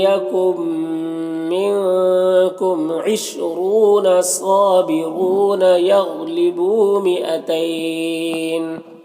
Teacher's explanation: یغلبون غین حروف مستعلیہ میں سے ہے، پر پڑھیں گے، بو میں واو مدہ ہے، ایک الف کے برابر کھینچیں گے.